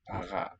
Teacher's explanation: The R is not really heard.